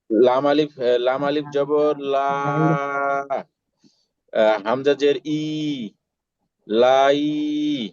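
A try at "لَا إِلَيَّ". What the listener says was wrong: তাই ই ই কেন টান টান হচ্ছে বলেন তো? জবর আ না, ইয়া জবর ইয়া। আচ্ছা, এই যে আগে যে ই যে টানছিলেন ভাই, এটা কি মনে করে টানছিলেন, আর পরে যে টানলেন না, এটা কি মনে করে টানলেন না, একটু বলেন।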